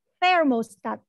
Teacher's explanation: thermostat thermostat saklar thermostat ini ada huruf t sama Ha berarti pengucapannya lidahnya itu seperti terselip diantara gigi bawah dan Gigi atas